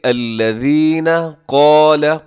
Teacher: سب سے پہلے الذین قال، قاف اس میں موٹا رکھیے گا، قاف بھی موٹا ہے اور اس کے ساتھ جو الف ہے اس کو بھی آپ نے موٹا رکھنا ہے، دونوں کو موٹا پڑھیے گا۔